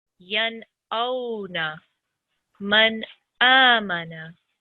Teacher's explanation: If it is any of these 6 letters, Nun, Sakin, and Tanween will be pronounced clearly with no nasal sound. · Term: clear pronunciation